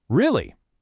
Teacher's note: Now for doubt, it kind of goes down, then back up.